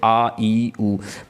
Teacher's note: वह स्वर जिसको बोलने में हस्व स्वरों से अधिक समय लगता है हस्व से ज्यादा समय लगता हो जैसे आ ई उऊ मतलब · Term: दीर्घ स्वर